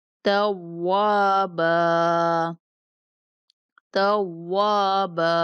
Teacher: وقف کی صورت میں ہم یہ تنوین کو ختم کریں گے، ایک زبر صرف پڑھیں گے